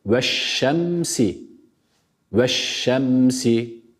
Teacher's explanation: bu Elif Lam takısını kendisinden sonra gelen Şin harfine idgam ettik ve Şin harfini ile şeddele yerek Okuduk ama burada bir kuralımız